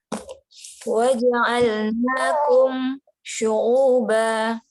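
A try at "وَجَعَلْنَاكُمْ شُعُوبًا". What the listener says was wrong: Kenapa kasih jeda? Saya bingung kenapa dikasih jeda. Kan kita kan mim sukun bertemu huruf shin.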